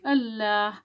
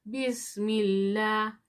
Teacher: अगर लफ्ज़ अल्लाह से पहले अगर जेर आ गया तो हम करेंगे इसको बारीक